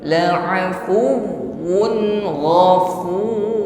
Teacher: Ghain ya, makhrajnya adalah halqi, tenggorokan paling atas. Sifatnya isti'la, bunyinya tebal.